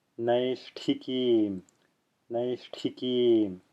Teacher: here we get to see this aspirated retroflex t in action here.